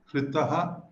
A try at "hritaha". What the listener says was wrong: hritaha. Hritaha, hrita, hritam. Except little bit dirgha sound came out. We should be careful to do hrasva.